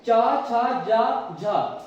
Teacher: इन 4 का कहां से उच्चारण होता है, तालु से उच्चारण होता है।